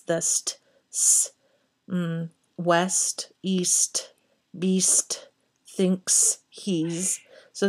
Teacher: there's actually a lot of sibilance in this poem too with the s's